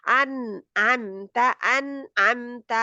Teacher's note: नून आइन इजहार का है, तो नून जज्म वाले पे जहाँ पे इजहार होगा, नून जज्म की आवाज जाहिर होगी